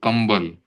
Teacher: फिर प वर्ग का अगर कोई अक्षर है प फ ब भ म तो जैसे कंबल तो क के बाद ब आया तो इसका उच्चारण म की तरह होता है।